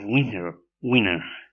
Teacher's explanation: As we see from these examples, in one of the pronunciations of winner. So T becomes N, meaning that T becomes N in the environment after N. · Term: total assimilation